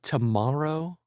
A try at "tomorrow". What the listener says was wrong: Tomorrow. Tomorrow. Tomorrow. Tomorrow. It sounds like you're saying you're doing like a kind of an Italian accent the way you say it.